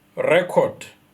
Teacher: record that is used as a noun, the stress is at the beginning